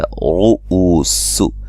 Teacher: او و مدہ ہے، سین کو باریک سیٹی سے ادا کریں گے